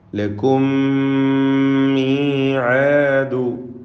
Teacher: 2 ഇദ്ഗാമുകളും ഇദ്ഗാം മിസ്ലൈനി സഗീർ എന്ന ഗണത്തിൽ വരുന്നതാണ്. മീമായതുകൊണ്ട് മണിക്കുകയും വേണം, ഷദ് വരുന്നത് കൊണ്ട്.